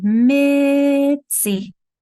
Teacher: that T is just real quiet there because I'm touching it and before I'm going into the next one.